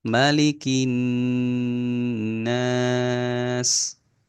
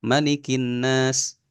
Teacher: nun dan mim tasydid itu 2 harokat lebih kan sedikit. Ya, kalau mau kita genapkan 2,5 seperti itu.